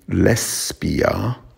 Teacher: it should be lesbia not a z sound